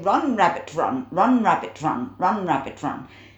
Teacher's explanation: you can lose that T at the end of rabbit if you like